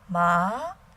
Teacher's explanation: Second tone, ma, starts medium in tone, and then rises to the top